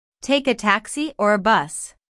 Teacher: taxi or a bus the word or Signal's a choice here notice the rising intonation on Taxi the first choice and falling intonation on bus the second choice